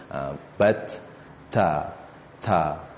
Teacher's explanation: kena keluarkan sedikit angin, barulah ta-nya tu sempurna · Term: hamas